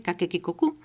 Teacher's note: Una que se representa como K y es la oclusiva velar sorda, y se leería siempre Kakekikoku.